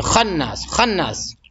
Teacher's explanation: یہاں بھی خا کو ذرا فل منہ بھر کے بولیے